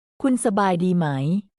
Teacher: try to keep a rising intonation at the end so it sounds like a question